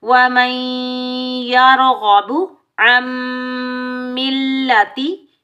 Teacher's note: را ساکن سے پہلے والے ورڈ پر زبر آنے کی وجہ سے را کو ہم پور پڑھیں گے، موٹا پڑھیں گے۔ غین حروف مستعلیہ، غین کو بھی موٹا پڑھیں گے۔ · میم مشدد پر بھی ادغام مال غنہ ہوگا، بغیر کھنچے پڑھیں گے